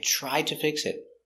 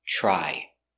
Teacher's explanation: You have TR. TR together, it makes the ch ch sound like chicken. So together, ch ch.